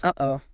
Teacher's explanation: The whole meaning of the expression relies on that sharp division of the two vowels. >> Uh-oh. And that feeling of your throat catching that tightness right in the middle. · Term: glottle stop